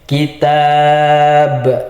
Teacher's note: Di sini kalau kita berhenti atau waqaf berhenti di sini harus dibaca mati. Karena ba ini adalah salah satu huruf qalqalah, maka harus kita pantulkan juga kitab. Karena kalau wakaf atau berhenti harus dibaca sukun atau mati, maka di sini dibaca qalqalah.